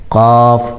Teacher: قاف یہ جو نقطے والا قاف ہے وہ یہاں حلق سے ادا ہوتا ہے